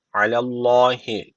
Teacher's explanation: Allah lafzı burada kalın okunacak çünkü öncesi harf üstten bağlanmış